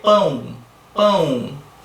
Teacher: Você tem o U ali na pronúncia final. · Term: fonema U